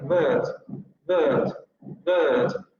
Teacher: británico sí van a pronunciar ustedes bird, bird, bird, bird, porque en inglés británico lo que va a suceder es que esta vocal va a diptongar y va a adquirir aquí el sonido schwa